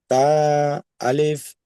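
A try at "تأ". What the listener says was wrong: আলিফ নয়, আলিফ নয়, আলিফ সাকিন নয়, তা হামজা জাবার, হামজা, শুধু হামজা বলবেন। ঠিক আছে, তা হামজা জাবার, কিংবা আলিফ হামজাও বলতে পারেন। তা হামজা জাবার তা। তা। তা। ঝটকা ঝটকা।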